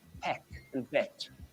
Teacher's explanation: Rather than an it sound in doing, the it we get in pit and lit and hit and pick becomes more like an eh.